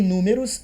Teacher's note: Antepenúltima é a mais forte, proparoxítona